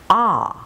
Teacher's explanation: the long ah sound, back to page 5, is made where? Well, low in the mouth and also in the center.